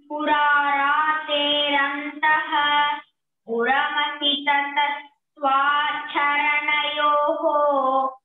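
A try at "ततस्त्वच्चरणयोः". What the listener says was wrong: Twa is not that. Tva charana yoho.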